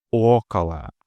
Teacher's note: In около, the first O is stressed and thus fully pronounced около. The other instances of O being located after a stressed vowel undergo second-degree reduction, functioning as an indistinct and very short filler vowel sound known as a schwa, около.